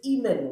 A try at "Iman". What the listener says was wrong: it's Iman, the Y is silent, yeah.